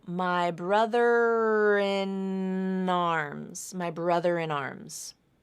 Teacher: arms you have another consonant to vowel link the n in in links over to the a vowel in arms